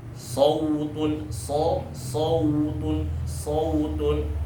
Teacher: Nah, dia karena wawu kan tipis, wawu dan ya itu tipis, sedangkan hurufnya tebal, maka itu akan tebal ke tipis. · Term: huruf lin